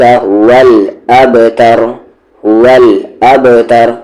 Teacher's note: با پہ قلقلہ اچھے سے باؤنسنگ ساؤنڈ